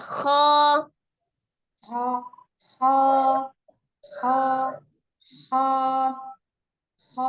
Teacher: tenggorokan bagian atas ya seperti agak sedikit ngorok seperti itu ya